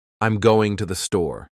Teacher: going and store are stressed because they carry the meaning